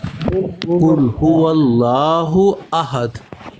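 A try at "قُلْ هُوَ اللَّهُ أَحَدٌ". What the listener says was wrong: واللہ مفخم، هو اللہ احد. واللہ نہیں بھئی، یہ فلیٹ کرتے ہیں نا، یہ زبر پر کھڑا زبر لفظ اللہ مفخم ہے.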